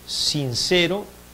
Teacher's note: la lengua rozando los alvéolos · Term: Alveolar